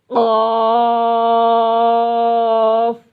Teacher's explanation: قاف زبان کی جڑ اور تالو کے نرم حصے سے۔